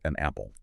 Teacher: when a word ends in a consonant and the next starts with a vowel, think an apple. Sounds like a napple. Exactly. The sounds just flow together. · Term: Linking